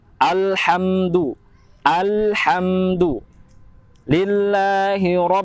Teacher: Kebanyakan alhamdu, lam itu dibaca mantul. Seharusnya lam itu tidak memiliki sifat dari memantul.